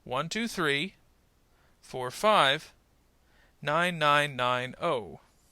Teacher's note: we will generally put the focus on the last number of each particular part of the number, and pause in the middle.